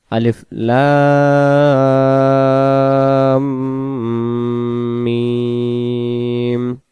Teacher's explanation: আলিফ অক্ষর বলার সময় কোনো টান লাগবে না, আর লাম বলার সময় আমরা 4 আলিফ টানবো এবং মিম বলার সময় 4 আলিফ। মাঝখানে একটা বাড়তি চিহ্নের মতো আছে, এটা যেখানে থাকবে সেখানে গুন্না হবে।